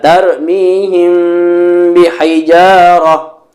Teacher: menemukan mim sukun bertemu dengan huruf ba Bagaimana cara membacanya mim sukun ditahan dua harokat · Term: Ikhfa Syafawi